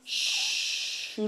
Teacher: 한국말에 없는 소리가 영어의 마찰음 스를 입술 내밀고 하는 슈입니다. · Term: 마찰음 슈